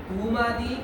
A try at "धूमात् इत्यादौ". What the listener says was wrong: धूमादि नहीं, धूमात इत्यादो, इकार उधर जाएगा।